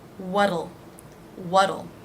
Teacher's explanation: the t here will be pronounced as a d it's flapped